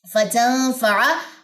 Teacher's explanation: ہمارے پاس ہوگا جی غنہ، اور غنہ بھی کون سا ہے؟ اخفاء حقیقی